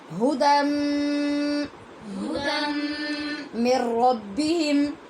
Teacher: یہ بھی ہدن تھا لیکن نون کا میم میں ادغام ہوا تو غنے کے ساتھ ہوا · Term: ادغام با غنہ